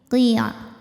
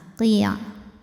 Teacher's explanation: Qafnya tebal, masukin ke ain ke tenggorokan tengah.